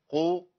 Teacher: قاف مفخمه تخينه قوي عشان مضمومه